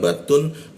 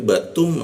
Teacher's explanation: langsung masuk ke mimnya ya bukan batun Tapi batum